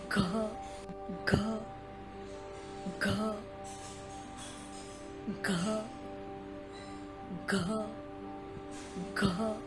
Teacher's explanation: इसी ग को जब आप महाप्राण में उच्चारित करोगे तो यह बन जाएगा घ